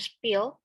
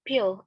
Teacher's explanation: P sound in pill is accompanied by a slight puff of air, that is an aspiration, and the p sound in spill is unaccompanied by aspiration or unaspirated